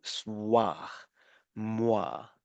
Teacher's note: the OE involves the semi-vowel, the W sound